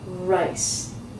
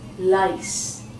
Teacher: A lot of people when they try and say the R, say the L and it comes out lice.